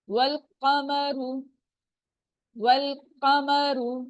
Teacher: व की जबर जो है व लाम से फौरन मिल जाएगी लंबा नहीं करेंगे